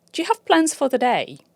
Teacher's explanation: for the is reduced and linked, making plans and day the key words. Therefore, for the becomes fodder.